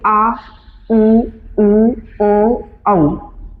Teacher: वे स्वर जिनके उच्चारण में जीभ का पिछला भाग या बाद वाला भाग सक्रिय रहता है उसे बोलते हैं पच स्वर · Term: पक्ष स्वर